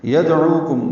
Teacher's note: گے. یدعوکم دال ساکن پہ قلقلہ ہے، عو واو مدہ ہے، عین وسط حلق سے ادا ہوگا